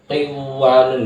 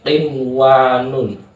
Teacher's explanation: Dalam satu kalimat, dalam satu kata, maka hukum bacanya adalah idhar, walaupun ada nun mati bertemu dengan wawu karena satu kata, maka hukum bacaannya adalah idhar, yaitu jelas